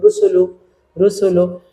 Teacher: রতে পেশ আছে তাহলে রটা মোটা হবে